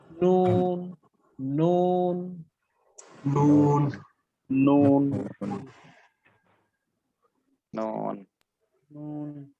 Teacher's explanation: জিহ্বার আগা উপরের পাটির দাঁতের মাড়ির গোড়া থেকে একটু উপরে লাগিয়ে